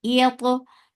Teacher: Ain from your throat, make it two counts long